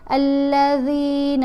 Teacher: ہم نے دیکھنا ہے کہ پہلے ذال کے نیچے زیر ہے، ساتھ یا ساکن ہے، تو اس کو ہم نے ایک الف کی مقدار جتنا لمبا پڑھنا ہے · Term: حرف مدہ